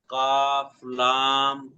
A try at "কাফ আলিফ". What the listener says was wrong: না লাম নেই, এটা আলিফ আলিফ, এটা লাম হলে এখান থেকে